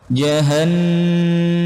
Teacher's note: Nun apabila ada huruf jaiyah bertemu dengan nun bertahdid hukumnya gunnah. Didengungkan teman-teman, dipanjangkan 2 harokat